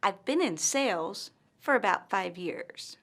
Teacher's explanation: pauses after the word sales and five years